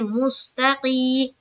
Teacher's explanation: या साकिन से पहले जेर है, या मद्दा होगी, या मद्दा को एक अलिफ की मकदार के बाकदर खींचकर पढ़ेंगे